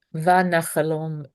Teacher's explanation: the first vowel is copycatting the second vowel. Why? Because the accent, the stress is on the last syllable